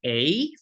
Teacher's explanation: A is an open mid front unrounded vowel moving to near close near front unrounded vowel